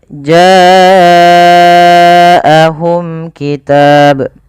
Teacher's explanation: Pada lafal bacaan ja'ahum ini wajib kita panjangkan sepanjang 4 atau 5 harokat. Kenapa? Karena ia ada bacaan yang dinamakan dengan mad wajib muttasil.